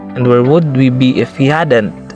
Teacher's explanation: I raised its pitch slightly in the end of the sentence because it was a question. Therefore, it is a rising intonation.